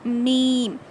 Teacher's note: दोनों होठों को टाइटली बंद करके खोलते हैं तब जाके मीम अदा होगा